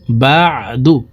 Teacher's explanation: আইন হরফকে হালকের মধ্যখান থেকে উচ্চারণ করব